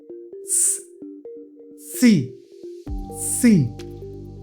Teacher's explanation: हवा डायरेक्ट बाहर नहीं आ रहा ये आके आपके तीथ से टकरा रहा है क्योंकि हम उस समय समय दांत को एसएस सी करके रखते हैं।